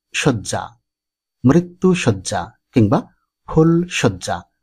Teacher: শব্দের আদ্য অয়ের পরে জফলা যুক্ত ব্যঞ্জন বর্ণ থাকলে অয়ের উচ্চারণ ওকারের মতো হয়।